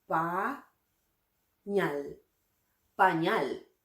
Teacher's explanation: Noten que la fuerza de voz recae justamente en la sílaba ñal.